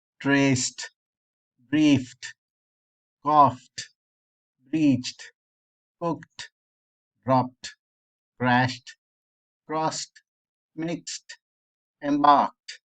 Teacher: we don't add any extra syllable to the pronunciation of the word